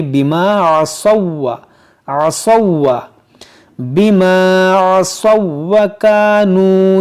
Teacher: پہلا حرف متحرک، دوسرا ساکن اور تیسرا مشدد ہے، تو اس واو کو اس واو میں داخل کر دیں گے. اس واو کو یہاں نہیں پڑھا جائے گا، اس کو پڑھیں گے بما عصوا، عصوا بما عصوا وكانوا يعتدون.